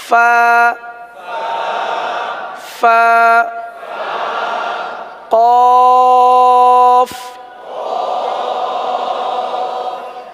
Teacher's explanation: ऊपर के दांत और नीचे के होठों का जो तर हिस्सा होता है वहां से होते